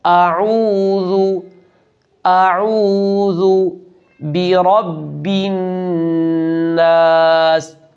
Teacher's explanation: ذال کو نرمی سے پڑھنا ہے اور حمزہ کے بعد عین بھی ادا کرنا ہے